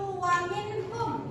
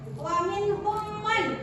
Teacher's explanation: Kenapa dia dikatakan izhar halki? Non sukun bertemu dengan ha, bacaannya baca jelas